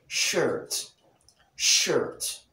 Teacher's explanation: the tip of the tongue is in contact with the alveolar ridge and at the same time the top of the tongue is in contact with the hard palate or the roof of the mouth